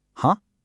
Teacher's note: The second tone starts around the middle and then rises up.